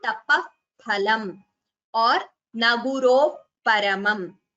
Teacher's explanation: When a visarga is followed by pa or pha, then there is an expulsion of air and you immediately close your lips. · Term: Upadhmaniya